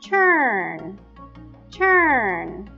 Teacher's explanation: Notice you feel a vibration on the final n sound. This tells us that the word turn ends in a final voiced sound.